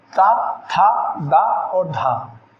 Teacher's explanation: जब जिह्वा दांतों को स्पर्श करेगी तो उसको बोलेंगे दंत वर्ग।